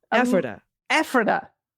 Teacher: Emphasis on the first syllable.